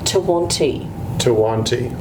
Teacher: It has the D in the spelling of it, but it's actually pronounced with the T sound.